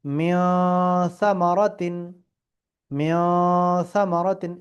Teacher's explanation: স্পষ্টভাবে মিন পড়বো না, এটাকে নাক দিয়েই পড়তে হবে